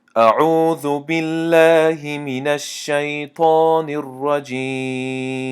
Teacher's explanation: لام لفظ الله تنک یعنی ترقیق میخونیم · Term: ترقیق لفظ الله